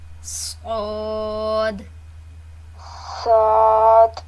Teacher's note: ہے، اس لیے لہٰذا اس کو موٹا ہی پڑھنا ہے، سیٹی کے ساتھ موٹا پڑھنا ہے اس کو